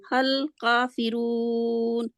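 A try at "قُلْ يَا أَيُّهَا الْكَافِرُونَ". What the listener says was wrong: Okay, लंबा नहीं जानी, हल नहीं करना, ये गलती है। आप हल काफिरून आप कह सकते हैं, आपको पीछे से फिर दोहराना पड़ेगा, हल काफिरून आप नहीं कह सकते।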